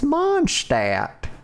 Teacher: It's Mondstadt. You just drop the D.